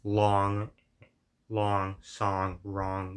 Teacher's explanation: Ong is maybe like lower or more back, or however you want to describe it. It's kind of like the vowel in the word long, song, wrong, the way I'm pronouncing it them right now.